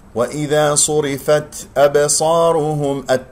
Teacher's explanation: صرفت بها تاء ساكنة بالأخير مهموسة في الوقف والوصل. وإذا صاد مفخم مرتبة ثالثة لمضمومة، الراء مرققة.